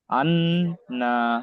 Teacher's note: হামজা নুন জবার আন নুন জব না আনা >> আনা এখানে এক আলিফ পরিমাণ গুণনা হবে